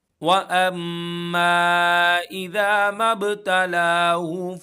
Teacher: یہاں پر غنہ کریں گے کیونکہ میم مشدد ہے